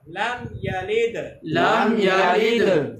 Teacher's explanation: اظہار شفوی۔ تو یہاں پر غنہ نہیں کرتے، میم ساکن کو ظاہر کر کے پڑھتے ہیں، یہاں غنہ نہیں کریں گے۔